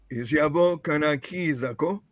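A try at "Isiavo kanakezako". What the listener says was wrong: Kanakezako. can you see the change here? I mean, here. Quiza, then keza. You change here. The change. Kana keza. Kana keza.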